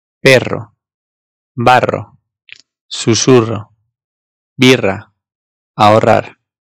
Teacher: İki tane R'nin yan yana gelmesiyle oluşan bir harf var. Bu da haliyle iki tanesi bir araya geldiğinden daha baskın bir R sesi çıkarıyor.